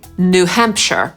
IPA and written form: nuː ˈhæmpʃɚ (New Hampshire)